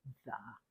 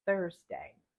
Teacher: the tongue sticks out slightly like the between the teeth and it lightly touches the bottom of the lip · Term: th sound